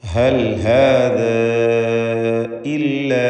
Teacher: ഹൽ ഹാദ ഇല്ല, ഇവിടെ ദീർഘം മദ് മുൻഫസിൽ ജായിസ് എന്നതാണ്. അലിഫിനെ 4-5 ഹറക്കത്തിൻ്റെ അളവിൽ ദീർഘിപ്പിക്കണം.